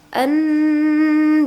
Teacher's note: Bi an itu gunnah, nun bertasydid disebut dengan gunnah ya. Nah, jadi didengungkan teman-teman 2 sampai 3 harokat